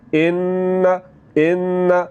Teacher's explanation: जब हम नून की आवाज़ को नाक में ले जाकर थोड़ा सा लंबा करेंगे तो ये गुन्ना होगा